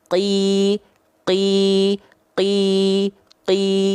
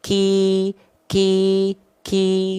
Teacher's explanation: sifatnya adalah jahr enggak keluar percikan-percikan nafas dia · kalau huruf Kaf karena dia nempel sebagian ke langit-langit yang keras keluarlah sifat hams keluarlah nafas percikan nafas sedikit